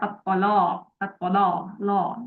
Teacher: Jadi la-nya menebal apapun kondisinya. Ini beda dengan yang riwayatnya Hafs. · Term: lam taghlidh